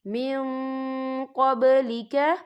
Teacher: تو ہم یہاں اکفا کریں گے، نون ساکن کی آواز کو ناک میں چھپائیں گے